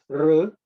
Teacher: R is pronounced when the tongue is curved up and pointing towards the top of the head.